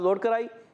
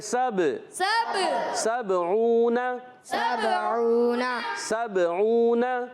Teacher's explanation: سبعون، سین کو با سے ملانا ہے، با حرف قلقلہ میں سے، اب آواز لوٹ کر آئے گی۔